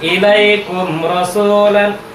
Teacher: Ah, itu kenapa dia tidak mendengung? Itu hukumnya adalah izhar syafawi. · Jadi kalau dapat mim sukun itu tidak berdengung, itu dia izhar syafawi.